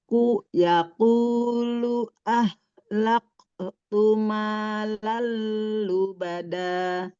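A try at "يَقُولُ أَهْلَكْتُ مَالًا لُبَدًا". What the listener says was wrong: Sekarang Bunda ngajinya mengalir ya, suaranya Bunda jangan ada terputus ya. Jadi mengalir aja. Nah, ada jedanya. Sudah bagus, jangan ada jeda ya. Sedikit lagi. Yaqulu ahlaktu malal lubada.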